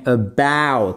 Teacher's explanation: C'est ici, sur la deuxième partie du mot, que se fait l'accent tonique.